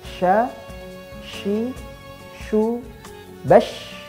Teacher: kesalahan berikutnya adalah kurangnya hembusan nafas ketika shin itu diucapkan. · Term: huruf shin